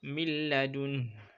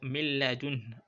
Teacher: If you listen well, milladun, I inserted nun into lam. · But you should not lay emphasis. That is, do not use the ghunnah. Do not observe the nasal snuffle. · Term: idgham bighayr ghunnah